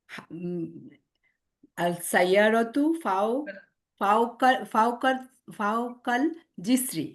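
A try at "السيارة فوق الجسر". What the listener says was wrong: জিসরি। আস-সাইয়ারাতু, আল-সাইয়ারাতু না, আস-সাইয়ারাতু ফাওকাল জিসরি।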